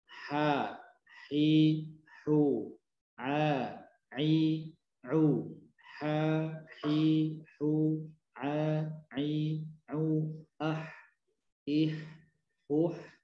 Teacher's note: tidak ada bagian lidah kita baik pangkal, tengah, ujung yang terangkat, sehingga terasa bunyinya, suaranya terasa ringan di rongga mulut kita ya, dari mulai rongga mulut belakang, tengah sampai depan terasa ringan. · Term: istifal